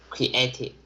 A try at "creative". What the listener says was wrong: Creative. Not create, but creative. There's no chopping of words. It's not creative, but it's creative.